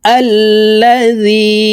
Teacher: আমরা এই জালকে তিন আলিফ টানে পড়বো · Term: মুনফাসিল